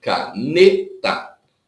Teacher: A penúltima sílaba é a tônica. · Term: sílaba tônica